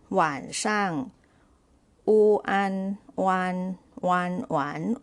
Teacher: wan wan, third tone, and shang is neutral tone, shi ang shang, so 晚 上 means evening.